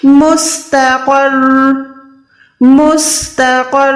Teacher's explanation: رو کو تھوڑا سا لمبا کرنا ہے تاکہ شد بھی ادا ہو جائے۔